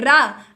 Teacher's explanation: आपकी जीभ एक कंपन कर रही है, वाइब्रेट हो रही है, तो रा आपका लुंठित है क्योंकि लुढ़क रही है रा, और आपकी प्रकंपित हो रही है, तो लुंठित और प्रकंपित है आपका रा रथ।